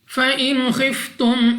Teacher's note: नून साकिन के बाद खौ हरूफ हलकी में से है, इजहार का कायदा है, बगैर गुन्ना के पढ़ेंगे।